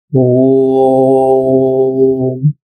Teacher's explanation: प्लुत यानी कि ऐसी ध्वनि जिसका उच्चारण अन्य स्वरों से 3 गुना ज्यादा होता है। उदाहरण के लिए देखिए, ओम, इसमें ओ और म के बीच में जो ध्वनि है वह 3 गुना ज्यादा है और इसलिए इसको 3 अंक से इंगित करने की प्रक्रिया है।